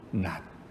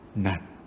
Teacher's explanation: 자, 그러고 보니까 이 네 단어들은 받침에 사용된 표기들은 각각 시옷, 지읒, 치읒, 티읒이지만 발음들은 모두 똑같이 디귿에 해당하는 드 발음이 났습니다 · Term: 음절의 끝소리 규칙